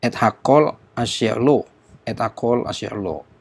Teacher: aksennya tidak berada pada kata et, pada hakol, asyer, tetapi berada di paling belakang yaitu lo